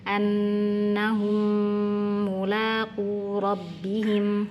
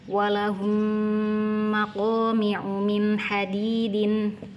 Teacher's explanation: Jadi ketika ada mim sukun bertemu mim, jangan buru-buru dibaca ke huruf mim setelahnya, tapi di sini dinikmati dulu gunnahnya, ditahan dan keluarkan suara dari hidung untuk menyempurnakan sifat gunnahnya